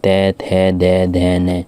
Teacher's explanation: अब ये देखिए ऊपर से नीचे आ रही है और हवा पास हो रही है। दंते से दंत, जो जीभ है दांत को टच करती है,